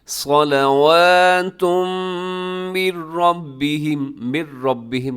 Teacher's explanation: نہ کیجیے گا، اور آگے صلواتن کے آخر میں تنوین ہے، تنوین کے بعد میم، یہاں ادغام ہے یرملون کا غنے کے ساتھ